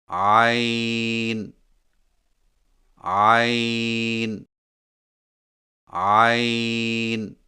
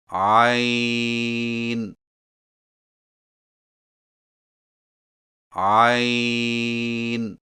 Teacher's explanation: زبان کی جڑ کو حلق کی طرف مضبوطی سے دباتے ہوئے باریک اور رگڑ کھاتی آواز میں پڑھیں